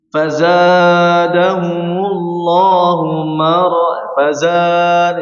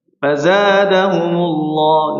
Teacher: tabi'i atau matabi'i dalam bacaan seperti ini juga harus sesuaikan 2 harakat, jangan sampai lebih. Jangan sampai fazadahumullahu fazad, saya terlalu panjang nih, salah ya.